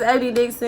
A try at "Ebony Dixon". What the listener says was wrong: Say it slower, cause that one got you slurred. You said it sound like it said Ebby Dixon. She gonna say my name Ebby Dixon. Ebby Dixon. Clearer.